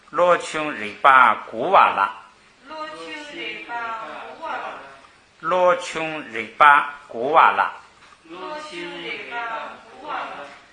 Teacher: 这个日巴呢是名词，所以要读成双音节词，是平着读。